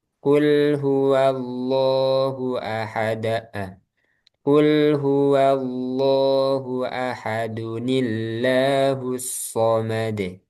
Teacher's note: Jadi dibacanya ada nun kecil ya, ahad ahadunillahusad. Jadi ada nun kecil kasrah.